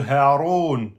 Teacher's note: C'est donc une lettre de la gorge qui est donc tout en bas de la gorge. C'est le ha de Haroun.